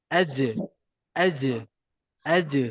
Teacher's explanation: Tengah lidah tu naik je ke atas, terus lantunkan dia. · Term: huruf melantun